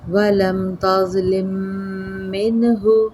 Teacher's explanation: میم شدت پہ غنہ ضرور کیجیے گا